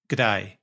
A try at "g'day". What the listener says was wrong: You got the accent right, but the inflection's all off.